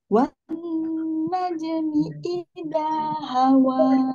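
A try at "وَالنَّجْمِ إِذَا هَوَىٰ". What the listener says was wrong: Jimnya, jimnya juga kol-kolah ya. Wan najmi idza hawa. Ini jangan segan-segan mengembalikan bentuk makhrajnya.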